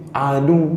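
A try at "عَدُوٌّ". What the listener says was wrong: Suaranya ditinggikan. Mati. Oh, jadi kalau orang yang paham akan ngerti, oh di sini bertasydid. Kalau kita baca adu, oh berarti tidak pakai tasydid gitu.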